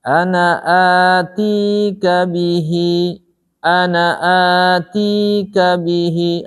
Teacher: Antara A mad badal. Ti mad tabi'i dengan bihi mad silah sughra. Sama-sama dua harokat. Tidak boleh di A-nya punya panjang.